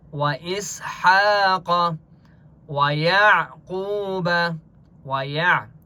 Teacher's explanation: عین کی آواز حلق سے نکالیں گے، یعنی بریک آواز نکالیں گے.